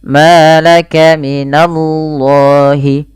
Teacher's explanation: lafal Allah ditebalkan huruf lamnya, di sini laf, ya, lam lafzul jalalah, yaitu lam tafkhim, dibaca dengan tebal, tapi hati-hati jangan menebalkan na-nya. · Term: lam tafim